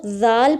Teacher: ذال کو ذال پڑھنا ہے، دس از نوٹ ذال، اس میں سیٹی نہیں آنی چاہیے